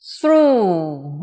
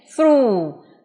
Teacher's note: Âm cuối của nó không có, đúng rồi, chỉ phát âm là u là hết. Through. Và đây là cuff, cũng là âm.